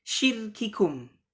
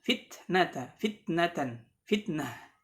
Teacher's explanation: Dan jagalah atau jelaskanlah pengucapan sifat syiddah, diperjelas syiddahnya, ya, pada huruf kaf dan ta, ya. Jangan sampai didominasi oleh sifat hams.